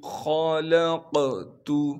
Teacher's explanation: ذرنی ومن خلقت، خا کو موٹا کر کے پڑھیں گے کیونکہ خا موٹے حروف میں سے ہے، لام کو قاف سے ملائیں گے کیونکہ قاف ساکن ہے اور قاف پر قلقلہ کریں گے اور قاف کو موٹا کر کے پڑھیں گے، تا کو باریک کر کے پڑھنا ہے۔